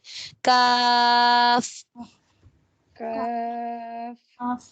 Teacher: اقصی لسان بالمقابل نرم اور سخت تالو. تو یہ حرف ہو جائے گا کاف